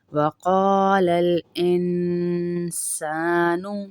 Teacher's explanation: وقال القاف کو موٹا کریں گے، یہ موٹا کاف ہے